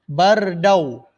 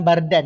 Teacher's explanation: Tanwin bertemu dengan waw iaitu idgham.